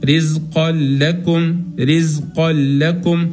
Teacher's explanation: ما هقرا التنوين ولا هقرا الغنه · كصيب التنوين غير متساوي وما جاء بعدها اللام والراء فعلى طول هنجيب الغنة. طيب لو جاء اللام والراء بعد التنوين الغير متساوي معناها إن ما هقرأ التنوين ولا هقرأ الغنة، هنقرأ رزقا لكم، رزقا لكم.